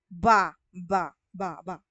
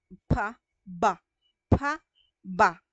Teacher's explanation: Pero, pagdating naman sa panlabi pa rin, labi pa rin ang gagana at yung dila natin, okay, nakasara. Yung bibig natin is nakasara, may tunog yung ba. Ba. So, maririnig ninyo na humihila na tayo ng hangin mula sa ating baga.